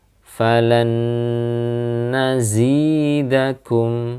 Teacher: maka cara bacanya adalah dengan didengungkan ya didengungkan kemudian ditahan Ya ditahan kurang lebih dua harakat ataupun tiga harakat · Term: idgham bhunah, idgham biunah